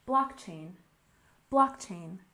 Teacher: we stress the first syllable blockchain